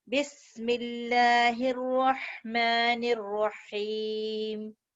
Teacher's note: یہ اسم جلالہ کا جو لام ہے یہ موٹا نہیں ہوگا. کیوں نہیں ہوگا کہ اس سے پہلے جو ہے نا زیر لگی ہوئی کسرہ ہے.